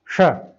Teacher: तालव्य यानी तालू से बोला जाने वाला